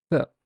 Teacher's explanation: If you pronounce th and put your finger on your voice box, you'd realize there's no vibration whatsoever. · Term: voiceless